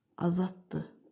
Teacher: Yenə də burada D, T kimi tələffüz olundu, özünün çar qarşılığı kimi.